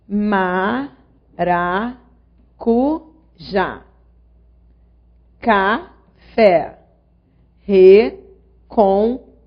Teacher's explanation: A sílaba tônica é a última sílaba da palavra. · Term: Oxítonas